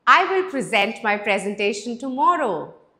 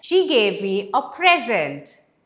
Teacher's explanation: So one is action, the stress is on the second syllable. Present, it's a noun, the stress is on the first syllable.